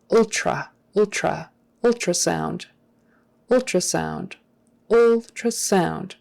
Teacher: the the accent is on the first syllable transplant ultrasound ultrasound that TR is often pronounced more like a CHR